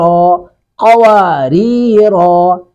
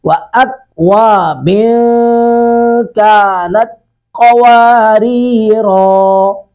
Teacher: ری کو باریک پڑھیں گے، قوف کو پر کریں گے، را کو بھی پر کریں گے، آخری را کو.